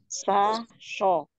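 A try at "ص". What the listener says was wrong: Ya, tidak bonyok mi bibirnya. So-nya tidak sho. Tapi slo, sama-sama desis ya. Cuman slo-nya angkat pangkal lidah aja. Sa slo, tebalkan slo.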